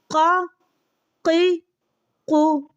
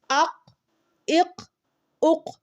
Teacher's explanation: زبان کی جڑ ہے اوپر نرم تالو سے لگے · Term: قاف